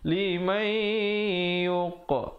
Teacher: ada pantulan di situ, khalkhalah sughra, qaf diberikan lantunan